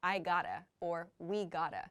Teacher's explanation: we often drop the v sound in quick speech so it sounds like i gotta or we gotta